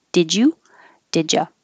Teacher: Did you is going to connect and make didj.